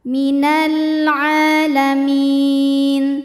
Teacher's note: Kemudian ada hukum alif lam qamariyah sebab alif lam menghadapi huruf qamariyah yaitu ain. Maka lam sukun dibaca jelas atau disebut dengan izhar qamari. · Minal hukumnya mad tabi'i muqaddar sebab ain berharokat fathah panjang. Cara bacanya panjang 2 harokat.